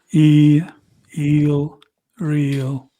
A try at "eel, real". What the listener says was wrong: Your placement's really high, so you're like and I'm down here like It's like eel, real.